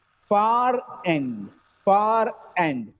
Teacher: If the next word starts with the vowel sound, the previous R is pronounced.